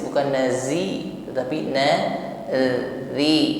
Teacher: huruf dzal tipis ya, lembut saja, pertemukan ujung lidah dengan ujung gigi sari atas ketika mengucapkannya. Tidak dengan suara desis, bukan nazi, tetapi nadhi.